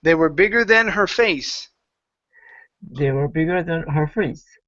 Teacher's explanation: We're going to stress face at the end.